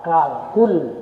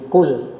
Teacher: Qaf itu makhrajnya di tengah tenggorokan. Jangan sampai turun dia menjadi kaf